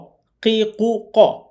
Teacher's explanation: কফ জিহ্বার গোড়া থেকে মোটা করে পড়তে হয়।